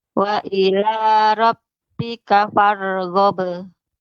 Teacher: Cepat. Qalqalahnya itu dia pantulan cepat.